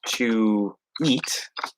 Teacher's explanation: if there's a vowel after it then we can link with this small W